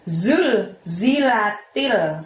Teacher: ketika mengucapkan zulzilatil semuanya pendek ya. Temponya hanya satu ketukan.